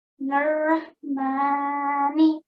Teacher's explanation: I could hear that you read the ha from your throat.